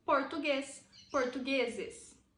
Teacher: veja que português a sílaba tônica é a última